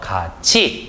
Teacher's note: 같이 같은 경우에도 갓이라고 하는 용언의 어간 뒤에 이가 붙었죠. 그렇기 때문에 티귿이 이를 만나서 치읓으로 변하는 현상. 그래서 같이 이런 식으로 역시 연음이 되는 현상이 되겠습니다.